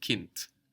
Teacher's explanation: k i n d but we hear a t